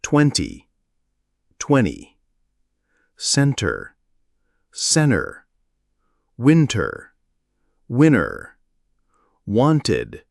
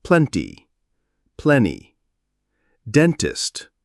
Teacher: This happens because it's simply easier and more efficient for the tongue to move from the N sound directly to the next vowel or consonant without stopping to articulate the T. It's a natural simplification in rapid casual speech.